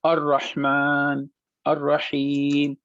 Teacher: لام کے بعد شدے کا نشان لگا ہوا ہے تو ہم نے لام کو نہیں پڑھا